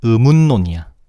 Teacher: 니은이 리을로 바뀌는게 아니라 오히려 리을이 비음 니은으로 바뀌어